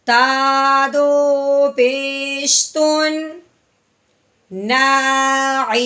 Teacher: اب اپنے تا کو اظہار کے ساتھ پڑھنا ہے بغیر غنے کے، تو کیسے پڑھیں گے؟